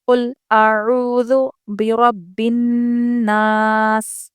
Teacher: چلیے قل اعوذ، ذال باریک آواز سے پڑھیں گے، عین اچھے سے حلق سے نکالیں